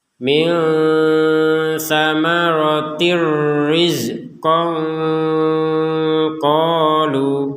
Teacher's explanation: Jadi, ketika digabungkan maka huruf ta bulat ini tidak terbaca ha lagi, tapi terbaca sebagai huruf ta sebagaimana semula. Kemudian tanwin bertemu dengan huruf ro ya, dimasukkan tanpa dengung.